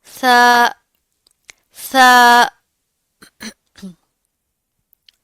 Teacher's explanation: जुबान की नोक ऊपर वाले सामने के दो दांतों के अंदरूनी किनारों से लगेगी तो सा अदा होगा